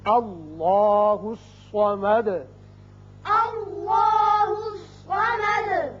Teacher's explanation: آیت ختم ہونے کی وجہ ساکن کریں گے اور سکون کی وجہ سے صفت قلقلہ ادا ہوگی. اللہ الصمد.